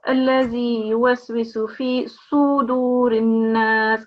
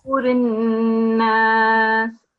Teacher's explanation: You have replaced the Dhamma, it's rounding of the mouth, you have replaced that with the Fatha.